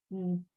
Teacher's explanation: There is no vowel, sound it out like an elongated small N.